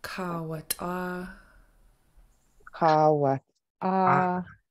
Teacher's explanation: you have a nice long double A, and then a short one, and then a long high double A